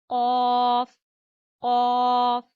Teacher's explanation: क़ाफ अदा होता है जबान की जड़ और ऊपर वाले तालू के नरम हिस्से से